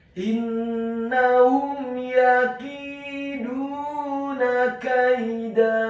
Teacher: Huruf dalnya dibaca tipis, tarqiq dhammah 2 harokat karena setelahnya ada huruf wawu sukun